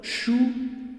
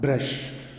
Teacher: So the word shoe brush begins and end with the voiceless palatal sound.